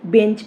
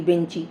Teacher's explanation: একেবারে শব্দের শেষে কি হলো ই স্বর ধ্বনির আগমন ঘটলো তাহলে এখানে অন্তে স্বরের আগমন ঘটলো তাই একে বলা হচ্ছে অন্তঃস্বরাগম